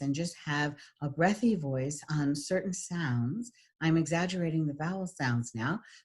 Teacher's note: I'm exaggerating the vowel sounds now so that you can hear that I'm letting out a lot of air on the vowel sounds